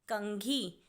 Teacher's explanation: जो अंग की आवाज आ रही है वह क के बाद आ रही है इसीलिए क पर लगेगा बिंदु और शब्द बना कंघी आगे है